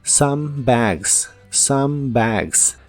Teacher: la o de some se pronuncia como a